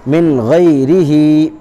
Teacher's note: یا مدہ کو ایک الف کے برابر کھینچ کر پڑھیں گے